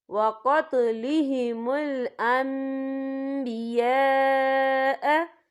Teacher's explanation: اور آگے دیکھیں انبیاء، یہاں خالف سے پہلے زبر ہے اور اس پر مد بھی ہے، یہ مد جو ہے مد متصل ہے، اس کی مقدار 4 حرکت کے برابر ہے تو ہم اسے 4 حرکت کے برابر کھینچ کے پڑھیں گے